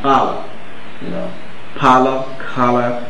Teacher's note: You must know these principles, that when you have a disyllabic word as color, and your stress falls on the first syllable, as in the word color, Now, the OUR in most cases at the end will produce schwa.